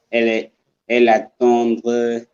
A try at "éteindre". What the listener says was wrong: Not étendre, not étendre. Étendre is a different word. Éteindre, yes, not étendre.